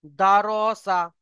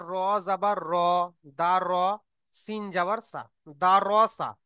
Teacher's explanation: যদি আমরা দারাসা পড়ি তাহলে আমাদের ভুল হবে, কারণ রর উপরে জাবার এসছে, মানে র কে পুর করে পড়তে হবে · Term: র পুর